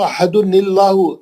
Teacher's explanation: تنوین میں سے نون نکل گیا، نکل کے کیا کرا اس پہ زیر آ گیا، زیر آ گیا، وہ زیر سے آپ کو لام میں جانا ہے، وہ اللہ نہیں پڑھنے کا ہے، وہ الف پہ زبر گرا دینا.